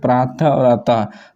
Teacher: विसर्ग का उच्चारण करते समय हो की ध्वनि निकलती है